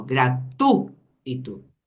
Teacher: temos o ditongo e é um ditongo decrescente ó gratu Ito o i quase não tem som